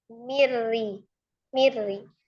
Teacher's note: Idham diidgamkan ditasdidkan ke khurf ro tetapi tidak disertai dengan dengung. Ya, bila ghunah itu tanpa dengung hanya dilebur saja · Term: idgham bila ghunah, idgham bila ghunnah